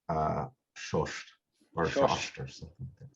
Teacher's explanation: the initial S and SH probably came together to just become SH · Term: sibilant harmony